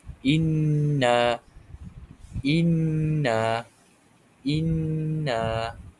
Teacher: Dua harakat kita dengungkan dia pada huruf nun tersebut · Jadi cara bacaannya dibaca dengung 2 harakat. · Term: Idgham ma'al gunnah, idgham ma'al gunnah